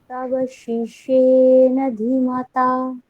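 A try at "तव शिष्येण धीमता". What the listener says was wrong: ধীমতা, ওখানে ধী দীর্ঘ, আবার বলুন।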